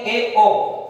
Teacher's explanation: अर्ध स्वर का मतलब क्या हो गया? वह वे स्वर जिनका उच्चारण करते समय थोड़ा या आधा मुख खुलता हो